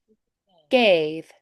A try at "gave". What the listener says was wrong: Gave. I don't really do the diphthong, and I keep it more tall inside my mouth, almost like a yawn space. Gave.